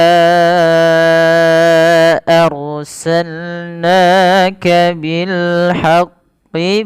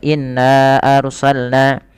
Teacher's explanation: pertama ketika melafalkan Nun yang berharakat tasdid maka apabila kita mendapati Nun yang berharakat tasdid ini perlu adanya penahanan di dalam pelafalan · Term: bacaan ghunah